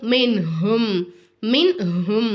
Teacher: நூனே சாக்கினையும் தன்வீனையும் வெளிப்படுத்தி ஓதணும் மூக்கால மறைக்கக்கூடாது குன்னா செய்யக்கூடாது